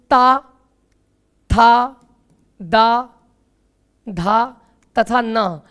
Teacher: आपकी जीभ जो है वो दांतों पर स्पर्श कर रही है